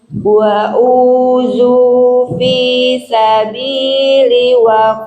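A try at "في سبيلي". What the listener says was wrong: Linya panjang, linya li sabili.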